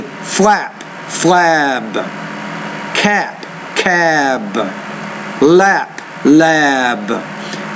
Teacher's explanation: the B is a voiced consonant which means the vowel which precedes it should be longer in its duration